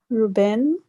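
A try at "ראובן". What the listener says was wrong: They call him Reuben, but his name is not Reuben. His name is Reuven.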